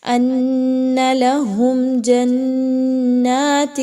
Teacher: میم ساکن کے بعد جیم آ جائے تو وہاں پر آپ نے غنہ بالکل بھی نہیں کرنا، اظہار شفوی کرنا ہے۔ ان لہم جنات، ٹھیک ہے، یعنی میم کے بعد آپ نے رکنا نہیں ہے کچھ دیر کے لیے، بغیر غنے کے پڑھنا ہے۔